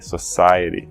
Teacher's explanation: A primeira é society, a segunda palavra na lista, society. Então, a sílaba pronunciada, enfatizada é a antepenúltima, sai. Society.